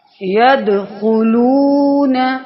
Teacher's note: یدخلون، اب دیکھیں دال پر قلقلہ ہو رہا ہے، دال جو ہے وہ ساکنہ ہے، تو اس پر قلقلہ کریں گے